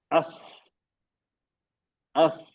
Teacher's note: ये आवाज बिल्कुल उससे मिलती है जैसे कोई विस्लिंग या बजिंग कह कह रहा हो, विस्लिंग बजिंग जैसी होती है। फॉर एग्जाम्पल, हमने पढ़ा अस, अस, अब इसमें क्या हो रहा है, इसमें देखिए, ये हम जब पढ़ते हैं तो ऊपर जो दांत है ना ये करीब हो जाते हैं, जबान की नोक नीचे आती है और ऊपर के नीचे के दांत ना करीब हो जाते हैं। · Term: सफीर